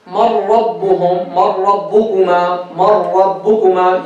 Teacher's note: مَرْ رَبُّهُمْ مَرْ رَبُّكُمَا. You see, we merge the noon completely into the ra, even though they're not mutamathil or mutajaz, they're mutaqarib. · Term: Idgham mutaqarib